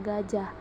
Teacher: direalisasikan sebagai bunyi G terbuka apabila berposisi sebagai onset, misalnya pada kata gajah.